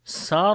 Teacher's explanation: And if we stop here, so this ra becomes light because ra comes with sukun and there is kasra before the ra